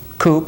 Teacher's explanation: what you do to make a rounded k is you make a k sound and you round the lips similar to the sound in english coop so if you say